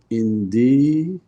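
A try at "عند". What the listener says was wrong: In the dal has a fatha. And then join it straight to the lam coming.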